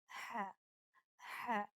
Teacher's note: ये हलक के दरमियानी हिस्से से अदा होता है, the middle part of the throat. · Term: वसतुल हलक